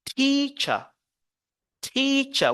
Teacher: you have to focus on the first syllable and then the second syllable is weaker